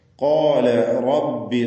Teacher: റാഇനും തഫ്ഖീം തടിപ്പിച്ചുച്ചരിക്കുക.